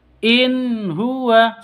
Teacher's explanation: In huwa, tidak boleh seperti itu ya. Ini harus jelas, nun sukun, nun matinya jelas, ha-nya juga jelas. In huwa, seperti itu, tapi tidak boleh disentak.